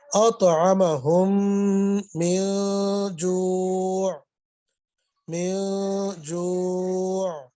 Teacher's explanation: ادغام ہو رہا ہے، ناک میں آواز لے جائیں گے